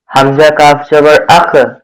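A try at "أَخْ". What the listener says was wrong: এটা কি কাপ নাকি কফ? আর একটু কলকলা হবে। হামজা কব জবর আক।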